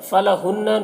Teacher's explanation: نون مشدد ہے، اسے غنہ کے ساتھ میں پڑھنا ہے۔